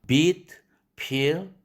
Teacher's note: beat, peel 이렇게 장음으로 발음할 때는 즉 긴장돼서 이렇게 길어지는 것이죠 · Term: 긴장 모음